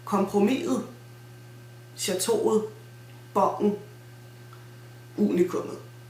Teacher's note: Can you hear this kind of squeaky sound? That's the glottal stop happening, basically.